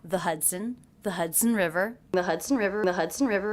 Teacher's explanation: The word the pronounced with the schwa, sometimes it's pronounced with an E vowel.